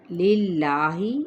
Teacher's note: اس میں جلالہ کا لام باریک پڑا جائے گا